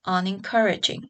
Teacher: unencouraging, with the prefix un having a secondary stress. So here it seems like the prefix kept the stress position of the base, whereas the suffix changed the stress position of the base.